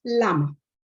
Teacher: the lateral substituting the rhotic in gramma, produced as lama